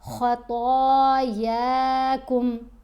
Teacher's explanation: خا اور طا دونوں کی آوازیں بھاری آوازیں ہیں، دونوں کو پر پڑھیں گے، موٹا پڑھیں گے